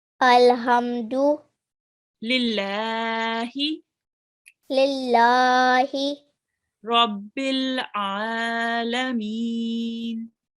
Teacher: So in this verse, we have the fatha ishbaya, the vertical fatha, which is prolonged for 2 seconds here and here again.